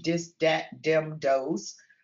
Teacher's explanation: the D for voiced th in the initial position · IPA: d/ð